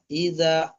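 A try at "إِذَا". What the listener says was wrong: ইজা, টান দেন, একটু বেশি করে টান দেন, একালি টান দেন।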